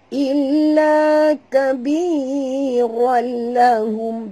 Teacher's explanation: tanwin ini apabila bertemu dengan lam eh masuk tanpa dengung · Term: idgham bila gunnah